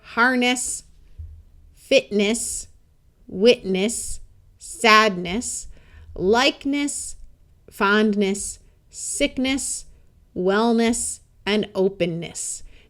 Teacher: did you hear how many of those words tended to sound more like n rather than NES